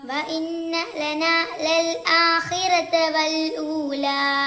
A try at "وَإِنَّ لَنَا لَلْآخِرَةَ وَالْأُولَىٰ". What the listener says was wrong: ഇവിടെ ഇന്നക്ക് ഷദ്ദുണ്ട്, പക്ഷെ നീട്ടാനില്ല. ലനാക്ക് കുറച്ച് നീട്ടാണ്ട്. ഇവിടെ ലനൽന്ന് ആയി പോവരുത്. ലന ലൽ ആഖിറത വൽ ഊല.